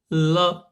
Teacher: ला का उच्चारण करते समय जो वायु है वो जीवा के पिछले भागों से निकलती है। आप उच्चारण करके देखिए ल, तो इसलिए वायु जो है पिछले भागों से यानी पीछे भाग से निकलती है, जीवा के पिछले भागों से वायु निकलती है। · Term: पार्श्व व्यंजन